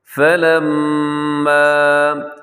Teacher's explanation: میم کے اوپر شد ہے تو یہاں پہ ہم کیا کریں گے؟ غنہ کریں گے، آواز کو ناک میں لے کے جائیں گے، اور اس کے اوپر جو مد ہے یہ چھوٹی مد ہے جسے مد جائز بھی کہا جاتا ہے۔